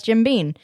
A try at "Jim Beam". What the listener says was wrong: Jim Beam, not Bean. Yes, it's not Mr. Bean. It's Beam.